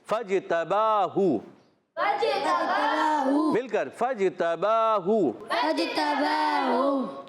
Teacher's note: تا پر زبر ہے، اس کو بغیر کھینچے ادا کریں گے، با پر کھڑا زبر، ایک الف کھینچنا ہے، ہا پر پیش، بغیر کھینچے پڑھیں گے۔